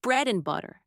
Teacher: and, which becomes und, or even just n in fast speech